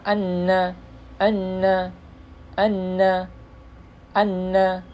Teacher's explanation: huruf nun itu di sini agak belakang sedikit di belakangnya sedikit lam